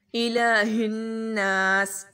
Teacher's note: اس میں لام کو لمبا کریں گے، لام کے اوپر کھڑا زبر ہے